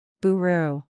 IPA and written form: ˈbʊər u (Buru)